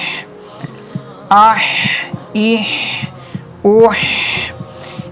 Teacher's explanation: اسی طرح یہ جو ہا ہے، جیسا کہ میں نے بتایا ہوا ہے آپ لوگوں کو پہلے بھی کہ خلق کے نیچے والے حصے سے 2 آئز والا ہا ادا ہوتا ہے